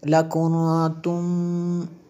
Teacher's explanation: نون ساکن کے بعد تا حروف اخفا میں سے ہے اس لیے یہاں پہ غنہ ہوا